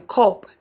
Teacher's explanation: central, half open, lax, and unrounded